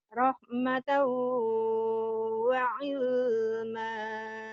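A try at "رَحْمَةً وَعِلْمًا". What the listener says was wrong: Ilnya jangan ditahan idhar. Rahmatan wa ilma.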